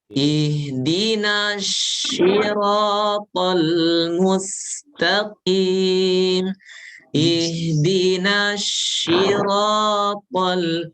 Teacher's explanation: Karena dia ingin membaca shad dengan tebal tapi malah apa? Merubah menjadi shin.